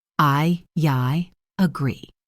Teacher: In I agree, a small y sound is inserted. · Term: vowel to vowel linking